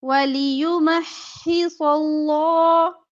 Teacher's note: وَلِيُمَحِّصَ اللَّهُ صاد اور لام موٹا پڑا جائے گا، ٹھیک ہے۔ لفظ اللہ اس میں جلالہ سے پہلے زبر ہے تو لام اس لیے موٹا پڑنا ہے، ویسے لام باریک پڑا جاتا ہے۔